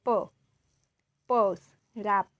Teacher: Oral consonant is blocked by closing the lips. This is bilabial.